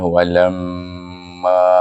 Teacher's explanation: Perhatikan, iaitu kita membaca pada lam alif mim itu dengan dua harakat. Ada bunyi dengung, lam dan ma dibaca dengan panjang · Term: wajibul gunnah